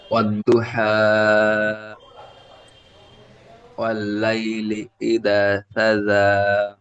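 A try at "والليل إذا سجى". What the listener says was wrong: ওয়াল্লাইলি ইজা, এই জালটি দালের মতো হয়ে যাচ্ছে। আরেকটু হালকা করে, ওয়াল্লাইলি ইজা সাজা। ইজা, জালটি একালি টান হবে, আলিফ মাদ্দা।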